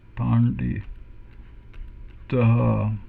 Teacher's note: we have one retroflex N and one retroflex D